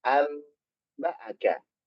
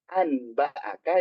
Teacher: Kalau ada nun sukun atau tanwin ketemu dengan ba, maka nun sukun atau tanwinnya berubah jadi apa? Mim sukun. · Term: iklab